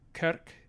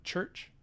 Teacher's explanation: in some varieties of Old English, we had this k going on rather than the ch. Northern varieties, actually.